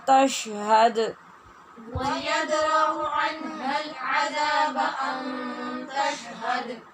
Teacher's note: ہم نے دال ساکن کیوں کیا؟ وقف کرنے کی وجہ سے. ویسے یہاں وقف نہیں ہے، ہم رکنا چاہ رہے ہیں کہ آگے زیادہ ہماری آیت لمبی نہ ہو جائے، تو ہم نے یہاں پہ رکنے کے لیے دال کو ساکن کیا.